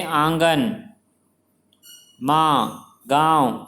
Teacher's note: अनुनासिक का उच्चारण नाक और मुंह दोनों से होता है।